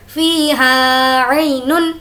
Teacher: عی بالکل بھی نہیں کھینچیں گے کیونکہ یالین ہے،